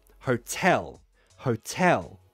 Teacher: stress the second syllable